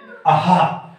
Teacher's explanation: हम गले में हा वाली ध्वनि हमारी कंठ से निकलती है